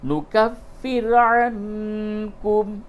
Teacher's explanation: نون ساکن کے بعد کاف ہے، یہاں پہ اخفا کیجئے